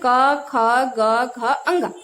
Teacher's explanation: और जो क वर्ग है, जब हम इसका उच्चारण, क वर्ग मीन्स 5 वर्ण आते हैं, इसमें 5 व्यंजन आते हैं, क, ख, ग, घ, अंग। जब हम इसका उच्चारण करेंगे तो बोलते समय जो हमारी जिह्वा है वह कंठ को स्पर्श करती है। यानी कि जब हम इसको बोलते हैं तो जो वायु है वो कंठ से टकरा कर निकलती है, इसलिए इसको कंठ कहते हैं।